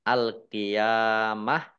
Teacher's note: ditandai lamnya dibaca sukun kemudian ya fathah berdiri Mad thii kemudian tak marbutoh karena waakaf dibacanya H sukun dibaca alqiamah waaka dan dibaca pendek karena tidak ada tanda panjangnya